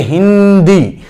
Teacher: हिंदी में ह पर ह्रस्व है, लेकिन फिर भी यहां बल अधिक लगा, समय अधिक लगा, जिसके कारण यहां पर सदैव गुरु होता है, लघु नहीं होता है। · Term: बलाघात